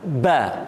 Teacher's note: Tapi kalau kita tekan sikit dalam kiraan dua jari, ba, itu tandanya dia dah baca tasydid.